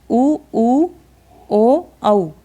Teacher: जैसे वृत्ताकार स्वर, वे स्वर जिनके उच्चारण में होंठ गोल हो जाते हैं